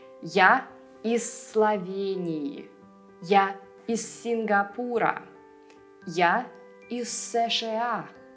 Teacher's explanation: if the next word starts with an S, all that you'll hear is just a long sound S